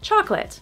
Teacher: so much stress on the first syllable that the next syllable kind of disappears.